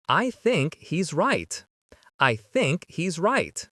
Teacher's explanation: There's no H happening here.